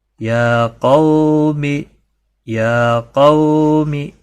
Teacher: دیکھیں یہاں پر کھڑا زبر ہے، اس کو ایک الف کے برابر کھینچنا ہے. قو واو لین ہے تھوڑا نرمی کے ساتھ، اور می کو کھینچنا نہیں، یہ حرکت میں سے ہے، کسی بھی حرکت والے حرف کو کھینچتا ہی نہیں.